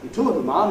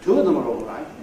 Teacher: that word ‘are’ /ɑː/ at the end of a sentence or the end of a rhythm group is not reduced, not made a weak form.